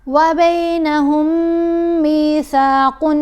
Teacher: میم ساکن یہاں مشدد میم پڑھیں گے. ہاں کو مشدد میم سے ملاتے ہوئے غنہ کریں گے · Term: میم ساکن کا ادغام